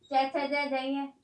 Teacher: च वर्ग तालू से बोला जाएगा